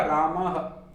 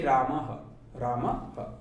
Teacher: जो ह का उच्चारण है वो आधे ह की ध्वनि का जो उच्चारण होता है वही विसर्ग का होता है।